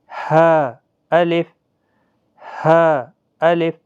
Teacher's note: تہائی حلق یعنی سینے کی طرف والا جو حصہ ہوتا ہے وہاں سے سانس چھوڑتے ہوئے ہا ادا ہوتا ہے نرمی کے ساتھ. ہا الف، یہ وسط حلق والا نہیں ہے.